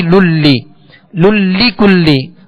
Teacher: وی، یہ وی واؤ یا زبر وی، انشاءاللہ اس کی کل جو مشق کریں گے یہ حروف لین میں سے یا لین ہے، اس کو ادا کرتے ہوئے معروف پڑھیں گے، وائے للی نہیں پڑھیں گے، وی للی للی کلی. اب لام، دونوں لام کے نیچے جو زیر ہے اس کو دراز نہیں کرنا، وی للی کلی اس طرح کھینچنا نہیں، بلکہ بغیر کھینچے بغیر جھٹکا دیے اسے معروف پڑھیں گے.